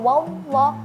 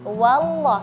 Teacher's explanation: selesaikan huruf wnya baru masuk ke huruf lam